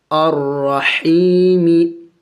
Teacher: دیکھیں یہاں پہ بھی یا مدہ ہے، یا ساکن سے پہلے زیر ہے، تو اس کو ایک الف کے مقدار کھینچنا ہوگا، لمبا کرنا ہوگا